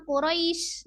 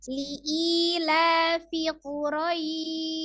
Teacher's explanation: Dilihat dari sifat yang siddah ataupun roghah, huruf shin termasuk dengan huruf yang roghah. Jadi dia mengalir dengan penuh ya, mengalir penuh.